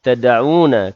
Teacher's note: dal yang sukun, qalqalah sughra, berdetak kecil pada dal yang sukun